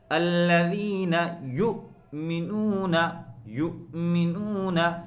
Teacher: حمزے کو ہمیشہ صاف رکھیں، اس کے اندر جھٹکا محسوس ہونا چاہیے۔